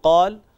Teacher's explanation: القاف دائما نقول يخرج من أقصى اللسان من قرب اللهاء، فهو حرف لهوي، وهو يخرج يخرج من صفاته انحباس الصوت، ولذلك هو حرف شديد أق.